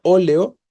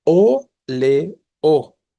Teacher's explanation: La palabra óleo tiene tres sílabas y la tónica es la antepenúltima, o, le, o, ¿no?